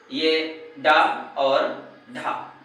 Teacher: जीभ पहले उठकर मूर्धा को स्पर्श करती है और फिर झटके के साथ में नीचे आ जाती है, इसलिए इन्हें उच्छिप्त व्यंजन कहा जाता है।